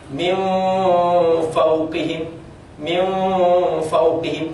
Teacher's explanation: disebut alikhfa disamarkan dan itu tidak dengung dia hanya menyamarkan